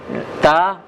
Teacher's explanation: kalau t tidak menghasilkan angin